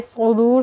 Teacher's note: स्वाद को मोटा पढ़ेंगे, सीन नहीं पढ़ेंगे। मोटा पढ़ने के लिए ज़बान को इस तरह से थोड़ा सा ऊपर की तरफ मोड़ना होगा।